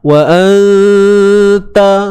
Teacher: Nun mati bertemu ta. Ikhfa haqiqi, ikhfa sembunyikan nun. Dengung mesti ada 2 harakat.